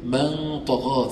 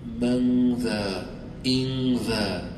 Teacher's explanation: The طاء is a heavy letter, is among the letters of تفخيم, the heavy ones. So the غنة that is coming out is heavy.